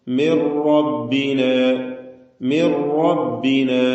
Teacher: തഫ്ഹീം ചെയ്ത് അതിനെ സ്വരഭാരത്തോടെ തടിപ്പിച്ചു പറയണം എന്നർത്ഥം മിൻ എന്നതിലെ സാക്കിനത്തായ നൂൻ സുക്കൂൻ നൽകപ്പെട്ട നൂനിനെ റായിലേക്ക് പൂർണമായും ലയിപ്പിച്ചു മണിക്കാതെ ഉച്ചരിക്കുന്നു റാഹ് മുശദ്ദായ ഒറ്റ റാഇനെ മാത്രം ഉച്ചരിക്കുന്നു റാഇന് തഫ് കൊടുക്കണം മി റബ്ബിന